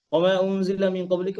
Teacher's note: এইখানে নুনটাও হিডেন থাকবে ইকফা গুন্না সবগুলো হিডেন থাকবে নুন পড়বেন না